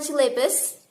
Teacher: the stress is on the first syllable of word